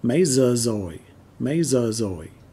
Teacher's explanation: the gi sound is pronounced like a z up north and so is the r